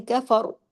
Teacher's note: پچھلے زبر کے اثر کی وجہ سے را کو ہیوی کر کے چھوڑ دینا ہے